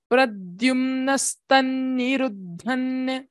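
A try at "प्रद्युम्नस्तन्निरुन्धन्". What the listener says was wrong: Nirundhan. Nirundhan. You are saying Nirundhan and you are saying it together. Nirun. The nakara is not heard. Nirundhan.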